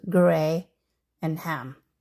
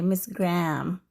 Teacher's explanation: in the Philippines, we say graham crackers with a clear gray ham, 2 syllables